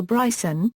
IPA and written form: ˈbraɪsən (Bryson)